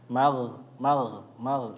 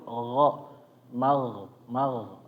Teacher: kalau gho ada gesekan juga tapi enggak sampai berdengkur